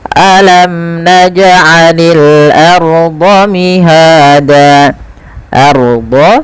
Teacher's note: tebalkan ro sukunnya karena ya ro tafkhim